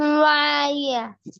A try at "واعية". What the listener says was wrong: واعیہ، یا کے بعد ہا ساکن کی آواز آنا ضروری ہے نا بھائی. واعیہ.